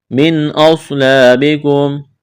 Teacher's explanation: من غنہ نہیں کریں گے، اظہار کریں گے